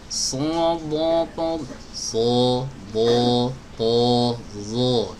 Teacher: Jadi suaranya aja yang tebal. Enggak diarahkan ke hidung. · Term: menebalkan